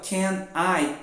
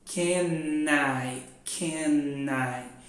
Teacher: Então, ao invés de eu falar separadinho ali, ó, can I, eu junto o som e fica can I.